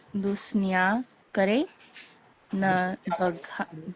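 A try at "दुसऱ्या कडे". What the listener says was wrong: R, not instead of N. Dusarya kade. Dusara, second. Other. D-U-S-A-R-Y.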